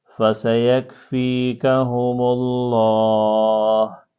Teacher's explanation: في شقاق فسيكفيكهم الله وهو السميع العليم. اب یہاں پر دیکھیں لفظ اللہ سے پہلے پیش آیا نا، تو یہاں پر بھی ہم نے لفظ اللہ کو موٹا کر کے پڑھنا ہے